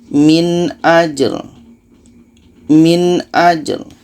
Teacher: Maka dua-duanya tetap kita baca. Ja ini sifatnya qalqalah, sedangkan ri ini sifatnya tawassut, ada kita alirkan.